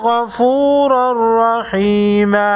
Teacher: تنوین کے بعد حروف یرملون میں سے را ہے، ادغام بلا غنہ ہوگا